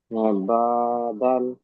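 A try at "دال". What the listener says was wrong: দাল এবং নুন এর টানগুলো ছেড়ে যাচ্ছে। দাল, এই দালটাকে 3 আলিফ পরিমাণ টান হবে।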